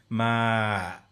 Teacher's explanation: And then I've got creaky voice, ma, where it ratchets down at the end.